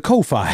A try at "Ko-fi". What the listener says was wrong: It's not Ko-Fi like SoFi. It's coffee.